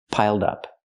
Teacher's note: Pronounce it like one word, not piled up, but piled up. Connect the d with the next word, dup, piled up.